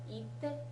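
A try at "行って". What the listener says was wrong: Itte. You remember it's that exception, right? The small tsu. Itte. It's not iite, it's itte. Itte. small tsu te. Itte.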